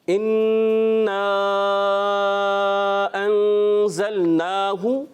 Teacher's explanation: اس میں جو ہے نون مشدد, 1 الف کا غنہ کریں گے, یہ مد ہے, اس کو ہم کھینچ کر ادا کریں گے, 2-2.5 الف کھینچ کر ادا کریں گے.